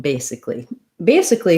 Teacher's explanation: we actually don't say anything for this a in basically basically sounds just more like